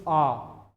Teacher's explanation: ये विवृत्त जो है जिसमें मुख द्वार पूरा खुलता है तो इसका आ जाएगा आ।